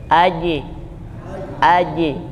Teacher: huruf Jim itu la hams tidak berhembus